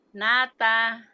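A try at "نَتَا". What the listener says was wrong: Nah, nanya pendek. Nata.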